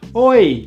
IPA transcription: ɔɪ